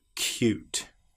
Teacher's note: we get the sound of the y before the vowel and after the very first consonant